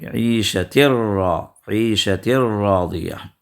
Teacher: یہ تنوین کا ساؤنڈ را میں داخل ہو جائے گا، یہ نون را میں داخل ہو جائے گا بغیر غنے کے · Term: ادغام بغیر غنہ